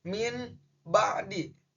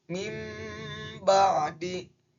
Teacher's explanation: Tapi berdasarkan dengan hukum bacaan iqlab, nun matinya harus digantikan dengan mim. Berarti bacanya menjadi mim ba'di. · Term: iklab